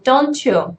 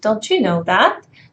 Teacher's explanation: t plus y forms ch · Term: ch sound